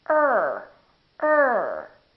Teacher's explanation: the tip of the tongue is not touching it's just pulled back curled up a little bit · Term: American r